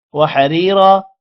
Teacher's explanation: وحریرا را کو موٹا نہیں کرنا کیونکہ را کے نیچے زیر ہے، را کے بعد یا ہے، لمبا بھی کریں گے. را اس را کو لمبا کرنا ہے اور موٹا بھی کرنا ہے.